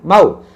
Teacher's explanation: মাউ, মিম জবর মাউ, এটা কিন্তু মাদ না, মাদ হতো যদি ওয়াও সাকিনের আগে মিমে পেশ হতো তখন মু হতো, মু বলে টান, যেহেতু জবর আছে তাহলে এটা মাদ না, তাড়াতাড়ি মাউ